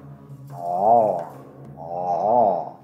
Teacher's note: a voiced pharyngeal fricative, and it is produced by narrowing the vocal tract at the place of articulation, with the tongue root against the back of the throat.